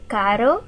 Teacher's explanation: this first one in caro we'll call the tap because the tongue taps the top of the mouth